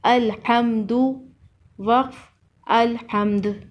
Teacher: حمزہ لام زبر ال، حا میم زبر حم، الحم، دال پیش دو، الحمدو، وقف الحمد۔ وقف کی صورت میں دال پر قلقلہ ہوگا